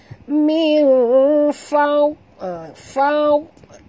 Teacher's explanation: fau tebal dan jangan lantun kerana dad tak termasuk huruf qalqalah, tebal dan hilang dalam mulut. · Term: huruf dad